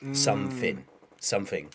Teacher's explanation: Another thing that I noticed as well. So for me, I will say TH with something called TH fronting, which is like an F or a V.